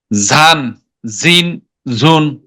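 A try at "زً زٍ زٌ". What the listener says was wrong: জি, সিটে আওয়াজ হবে, আরেকটু সিটে আওয়াজ হবে। বেনজিরের প্রথমে কিন্তু আপনারটা জালের মতো শোনা গেছিল, সিটে আওয়াজ না আসার কারণে।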